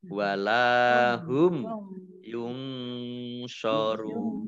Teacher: Nun sukun bertemu dengan huruf shod, bacaan ikhfa, dibaca samar-samar. Dhammah tanwin bertemu dengan huruf wawu, bacaan mat tabi'i, tetapi karena bertemu dengan huruf terakhir yang dibaca sukun karena waqaf, maka menjadi mat aridh lis sukun. · Dhammah tanwin bertemu dengan huruf wawu, bacaan mat tabi'i, tetapi karena bertemu dengan huruf terakhir yang dibaca sukun karena waqaf, maka menjadi mat aridh lis sukun. Mat aridh lis sukun dibaca panjang, boleh 2 harokat, 4 harokat, atau 6 harokat.